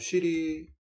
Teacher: 여기서 위라는 건 무슨 모음? 고모음, 원순, 전설모음 이렇게 될 것이고요